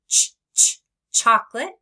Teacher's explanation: So watch my mouth carefully for ch. I round my lips and I pull back my tongue. I stop the air and then let it out quickly in a burst, like in the beginning of chocolate. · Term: ch sound